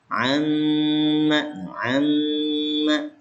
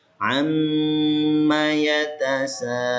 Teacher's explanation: Biar kena gunnahnya. Ya, biar masuk ke khoisum, ke pangkal hidung. Tahan 2 harokat. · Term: gunnah mim bertasdid